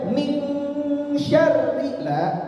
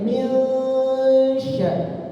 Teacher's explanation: dibaca dengung tapi enggak sampai dibaca eng. Enggak sampai dibaca min syarri la. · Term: ikhfa hakiki